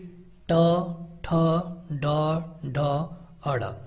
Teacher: तो ये तालु के अगले भाग से इनका उच्चारण होता है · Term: मूर्धन्य